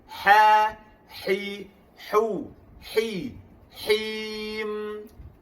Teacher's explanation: Jadi jangan sabdukan huruf ha tersebut. Nirrahi, huruf ha tengah-tengah kerongkong.